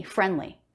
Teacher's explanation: the D comes after an N before a consonant. Very common to drop that D. I didn't say friendly, but there's no D, friendly.